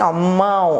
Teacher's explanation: sinal gráfico aí que vai dar um pouquinho assim pelo nariz a gente vai falar um pouquinho pelo nariz vai sair pela boca e também pelo nariz por isso que a gente fala assim ao mão o nariz